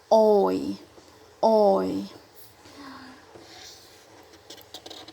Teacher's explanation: both of them are pronounced as oi so it's gliding you know from the positions of or to the positions of e